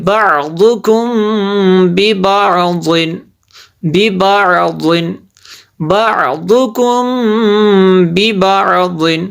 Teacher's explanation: یہاں پہ ہوگا اخفاء شفوی یہاں پہ اس لیے غنہ ہوگا